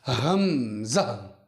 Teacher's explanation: حمزہ کو ہماری زبان سے یا منہ سے یا باہر کے حصے سے ادا نہیں کیا جائے گا، بلکہ حمزہ کو ہمارے سینے سے ادا کیا جائے گا